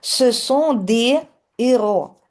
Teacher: Devant un H aspiré, перед придиховим H, nous ne faisons pas la liaison. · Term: Les liaisons interdites